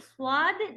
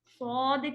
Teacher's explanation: سواد نہیں کہیں گے، ٹھیک ہے، سود کہیں گے ایک جیسا ہیوی رکھیں گے. سو جتنا بڑا بھی چلا جائے نا تو اس کے اندر ہمیں بیچ میں سوا وا والی ساؤنڈ نہیں دینی ہوتی ہے.